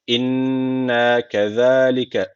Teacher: Buradaki Z peltik ve ince. Hem peltik hem ince.